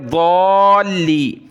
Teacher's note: ضاد الف لام مد زبر، ضال لام یا زیر لی، مد کی وجہ سے کھینچا اور لام کو یہاں سخت کیا تشدید کی وجہ سے